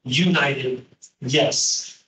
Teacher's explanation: When you say United States, the first sound is actually the sound of a Y. Like yes, right? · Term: Y sound